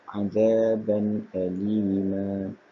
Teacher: bacaan terang dan tanpa dengung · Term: izhar halqi